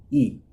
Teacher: आपकी जो जीभ का सबसे अगला वाला भाग है, ठीक है, वहीं से इसका उच्चारण हो रहा है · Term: अग्र स्वर